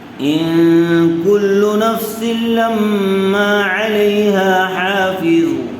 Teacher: نون ساکن کے بعد حروف اخفا میں سے کاف آیا ہوا ہے، اس لیے غنّے کے ساتھ اخفا کر کے پڑھیں گے۔